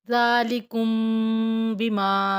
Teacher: میم ساکن کے بعد با اخفاء شفی ہوگا، غنہ کریں گے